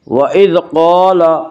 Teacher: قاف کو پر پڑھیں گے، قاف حروف مستعلیہ میں سے ہے۔